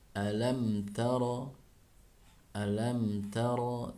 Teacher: Nah kalau ini mim sukun bertemu dengan ta dibacanya jelas ya, maka istilahnya izhar syafawi, izhar artinya jelas. Jadi dibaca alam taro, alam taro, tidak dibaca alam taro, menjadi agak lama ya.